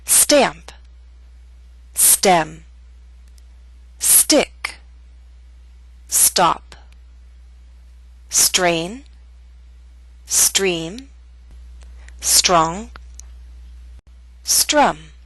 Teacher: with the st we do not have a strong puff of air